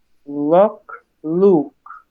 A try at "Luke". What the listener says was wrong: A little rounder for Luke. Luke. So definitely both those sounds I think would be good to study.